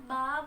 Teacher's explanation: बा बंद होंठों के गीले हिस्से से अदा होता है।